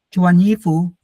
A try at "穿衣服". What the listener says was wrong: 不是穿衣服。 对 ，ch is again aspirated. 穿衣服 ，people need to hear.